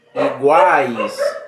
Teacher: Então, quando você chega no A, há uma acrescência. Quando você chega no I, há uma decrescência. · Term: tritongo